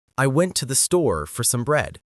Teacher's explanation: Say went, store, and bread clearly and a bit longer. Say I, to, the, for, some quickly and reduce the vowels. Closer to sounds, ta, the, sa. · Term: natural English rhythm